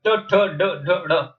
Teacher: ये मूर्धा का स्पर्श करते हैं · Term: ट वर्ग